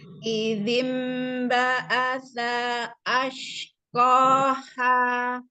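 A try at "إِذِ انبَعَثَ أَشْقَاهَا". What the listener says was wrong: Jangan terputus. Izim ba'asa ashqaha.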